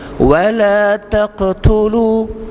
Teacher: Wala taqtulu, huruf qaf tu huruf qalqalah, qaf ta ba jim dal. Bila mati di tengah perkataan, nama dia qalqalah sughra, letupannya kecil sahaja.